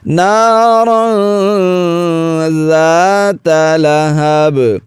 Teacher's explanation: زال کو نرمی سے ادا کریں گے، سیٹی کی آواز بالکل نہیں۔ لہب، با پر وقف کی حالت میں قلقلہ کریں گے۔